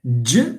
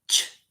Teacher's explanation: J there is a vibration but ch no vibration. So here this is voiceless.